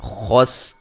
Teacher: خا کو موٹا ادا کریں گے، سین کو باریک سیٹی سے ادا کریں گے. من نون ساکن کا اظہار ہے، غنہ نہیں کریں گے.